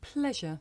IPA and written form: ˈpleʒə (pleasure)